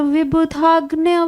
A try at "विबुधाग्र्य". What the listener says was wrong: अग्न्य नहीं है, विबुधाग्र्य, अग्र्य।